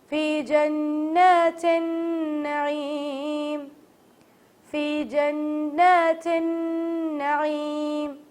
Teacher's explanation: جن پہ بھی غنہ کریں گے, تن پہ بھی غنہ کریں گے, اور نون کھڑا زبر کے ساتھ ہے تو اس لیے اسے کھینچنا لازمی ہے